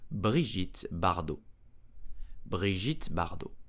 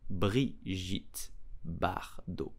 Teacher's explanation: the T at the end of bardo is totally silent